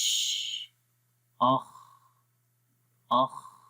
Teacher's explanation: خا کی آواز آ رہی ہے، سانس جاری ہو رہا ہے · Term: ہمس